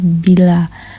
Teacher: menghasilkan bunyi bilabial yaitu bunyi yang terjadi karena adanya dua bibir atas dan bawah yang saling bersentuhan